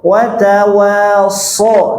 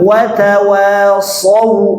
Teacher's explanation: Jangan saw. Jangan vokalnya pakai a, jangan. Tapi pakai o.